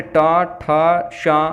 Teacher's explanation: तो मूर्धा होते हैं यानी ऊपरी दंत पंक्ति के समीप कठोर तालु के अंत में जो खुरदरा भाग होता है उसे मूर्धा कहते हैं। जैसे ट, ठ, श का उच्चारण इसी से होता है